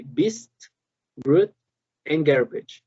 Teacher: we have the b, the close, the stop of this of the airflow, and then the release and the vibration